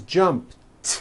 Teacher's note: the final sound in Jump is a p P which is unvoiced